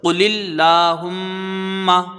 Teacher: لام میں کھڑا زبر ہے، یہاں پر یہ لام ایک الف کی مقدار کھینچ کے پڑھا جائے گا اور لام باریک ہوگا کیونکہ اس میں جلالت سے پہلے یہاں زیر ہے. ہا کو میم سے ملائیں گے، میم مشدد ہے، یہاں پر ایک الف کی مقدار غنہ ہوگا. · میم مشدد ہے، یہاں پر ایک الف کی مقدار غنہ ہوگا. میم کو جلدی پڑھیں گے، زبر ہے.